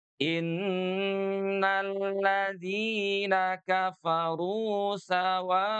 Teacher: berwakaf pada kalimat sawaun gitu ya, maka boleh dibaca enam harakat